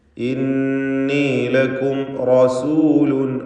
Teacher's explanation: റസൂലുൻ, റായിനെ തടിപ്പിച്ച് തഫ്ഖീം ചെയ്ത് ഉച്ചരിക്കുക